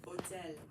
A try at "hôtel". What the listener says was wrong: Yeah, don't say the H. So great correction there.